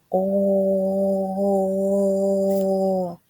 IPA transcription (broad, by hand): о